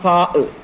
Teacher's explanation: മഖ്റജ് 1 സാ, നാവിന്റെയും മേൽ മുൻപല്ലുകളുടെയും തല. ഇവിടെ നിന്ന് കാറ്റോട് കൂടി പുറപ്പെടുന്നു. ഇതാണ് സാഇന്റെ മഖ്റജ്.